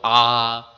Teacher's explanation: পুরো গোল হয়ে গেল মুখটা অনেক শূন্যস্থান সৃষ্টি হলো